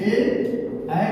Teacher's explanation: तो कंठ और तालु के संयोग से ए और ऐ को होता है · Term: कंठ तालु